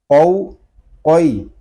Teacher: ناظرین یہ قاف جو ہے یہ زبان کی جڑ اور تالو کے نرم حصے سے ادا ہوتا ہے۔ حلق کے درمیان گوشت کا چھوٹا سا جو ٹکڑا لٹک رہا ہے اس سے ٹکرا کر اس کی آواز نکلے گی